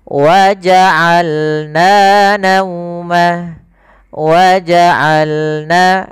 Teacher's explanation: Dari tengah tenggorokan kita lafalkan ain.